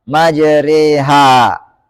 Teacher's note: huruf alif yang dibaca imalah itu huruf yang dilafalkan condong dari Alif ke ya yau dari fathah ke kasrah ah dalam riwayat hafz ini cuma